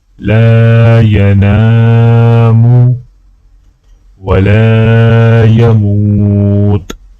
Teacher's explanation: لام کو الف کے ساتھ ملاتے ہوئے ایک الف کے برابر کھینچیں گے